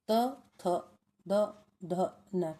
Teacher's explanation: दंत्य, next कौन से हैं, दंत्य है, त, थ, द, ध, न। जब हम इन वर्णों को बोलते हैं तो हमारी जीभ है जो दांतों से स्पर्श करती है।